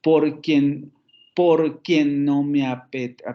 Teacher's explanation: otra vez tenemos el acento en la segunda sílaba